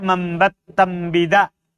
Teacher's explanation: Ya, karena tidak bisa nun makhrajnya beda dengan ba. Jadi diganti mim supaya makhrajnya sama dengan ba di bibir